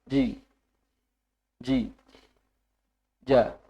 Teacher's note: bagian tengah lidah bertemu dengan langit-langit atas bertemu itu tidak merapat tidak sangat rapat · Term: Jim